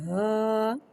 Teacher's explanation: الف سے پہلے زبر آ رہا ہے، الف مدہ ہو رہا ہے، لہذا حرف مدہ کو ایک الف یعنی 2 حرکات کے برابر کھینچے پڑھیں گے، اور زبر کو منہ کھول کے ادا کریں گے، ہا، الف زبر ہا۔